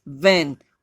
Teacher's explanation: ऊपर वाले दांत नीचे वाले होठ को अंदर की साइड से टच करेंगे